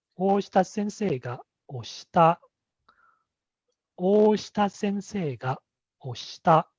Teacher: it has the high pitch accent on se, and oshita, it's a flat intonation. So I will start with a low tone.